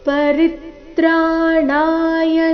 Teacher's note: ಪರಿತ್ರಾಣಾಯ ಈ ಶಬ್ದದಲ್ಲಿ ರೀ ಮೇಲೆ ಆಘಾತ ಬರಬೇಕು. · ಸಾದ್ ನಂತರ ಧೂ ಮಹಾಪ್ರಾಣ ದೀರ್ಘ. ಸಾಧೂನಾಂ ಅನುಸ್ವಾರದ ಉಚ್ಚಾರಣೆ ನಾಸಿಕಾವ ರೀತಿ.